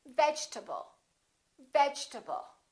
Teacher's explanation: This E disappears, and this A is reduced because it's part of the unstressed syllable, and we say vegetable.